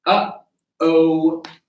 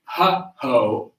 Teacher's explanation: Another thing that's very helpful is using the glottal sound. The glottal sound is like it's a clicking of your vocal cords. You can very easily discover this with the phrase, uh-oh.